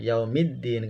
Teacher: Lamnya tidak bisa dibaca. Yang dibaca huruf dal yang berharokat sukun. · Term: alif lam syamsiyah